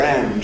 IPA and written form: ænd (hand)